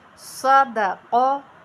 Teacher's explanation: دو حروف پر ہیں، درمیان والا حرف پر نہیں ہے۔ صادا قا، دو دفعہ ہونٹ گول ہوں گے اور درمیان والے دال پہ ہونٹ کھل جائیں گے